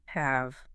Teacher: Have ends on the voiced labiodental fricative, the V sound. You have to bite your lower lip and make your throat vibrate.